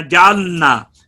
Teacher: اور اکثر یہاں پہ توجہ نہ کرنے کی وجہ سے کئی لوگ جو ہے وہ اس طرح بھی پڑھ جاتے ہیں جعلنا، یعنی ایسا محسوس ہوتا ہے کہ لام کو نون میں ادغام سا ہو جاتا ہے. تو اس کی وجہ یہ ہوتی ہے کہ لام کو ادا کر کے زبان کی نوک مخرج سے اٹھا کر دوبارہ نون کی ادائیگی میں تالو پر لگائی جاتی ہے.